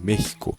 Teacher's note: A própria palavra do México em espanhol se fala México, com som de dois R's aqui.